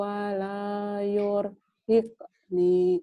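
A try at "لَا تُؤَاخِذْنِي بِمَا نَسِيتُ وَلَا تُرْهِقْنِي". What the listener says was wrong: Kamu sering ketuker ta sama yu. Itu ta di titiknya di luhur. Turhikni.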